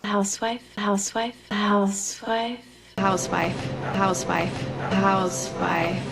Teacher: 역시 리듬은 data 요 리듬이에요. 그래서 길이감을 house 길게 빼줘야 되고 W 주의하셔라. 그것만 신경 써도 아마 잘 나올 거예요.